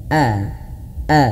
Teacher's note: sedikit ada hentakan agar pelafalan huruf hamzahnya lebih jelas